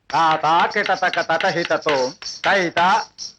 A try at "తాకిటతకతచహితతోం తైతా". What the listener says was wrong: లయ తప్పుతోంది బాబు. లయ తప్పుతోందమ్మా, చూడవే.